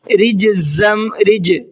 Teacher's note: رج جیم کے اندر قلقلہ کرنا ہے، اس لیے کہ جیم بھی حروف قلقلہ میں سے ہے اور اس پر جزم بھی ہے۔